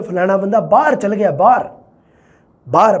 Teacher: ਉੱਚੀ ਸੁਰ ਉਹ ਹੈ ਜਦੋਂ ਦਬਾਅ ਹੈ ਜਿਹੜਾ ਉਹ ਪਹਿਲੇ ਸੁਰ ਤੇ ਪੈਂਦਾ। ਹੁਣ ਦੇਖ ਲਓ ਪਹਿਲੇ ਸੁਰ ਤੇ ਪੈ ਰਿਹਾ, ਪਹਿਲੇ ਤੇ ਪੈ ਰਿਹਾ, ਆਹ ਦੇਖੋ ਬਾਹਰ ਤੇ ਪੈ ਰਿਹਾ, ਮਤਲਬ ਬਾਹਰ ਬੋਲਣ ਦੇ ਵਿੱਚ ਸੀ ਪਰ ਮੈਂ ਬੋਲਿਆ ਬਾਹਰ ਤੇ ਪ੍ਰਭਾਵ ਪਿਆ ਬੈ ਤੇ।